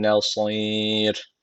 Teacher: Dururken meddi ararı tecviti var. Bir elif uzatarak duruyoruz. Bir de bakın son harf ra harfi dururken cezimli oluyor.